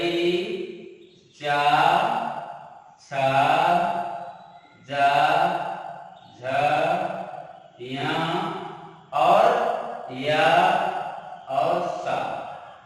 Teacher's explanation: तो ताल जो होता है, जब हम इन शब्दों को बोलते हैं तो हमारी जीभ ऊपर उठ करके जाके ऊपर वाले भाग को छूती, तब ये अक्षर निकलते हैं, तो उसी को ताल, मतलब ताल के स्पर्श से ये अक्षर बोले जाते हैं।